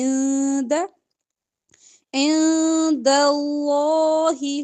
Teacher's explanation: یہاں پہ نون کی آواز کو آپ نے چھپانا ہے